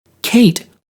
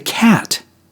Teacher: The A in Kate is two sounds. The A in cat is one sound.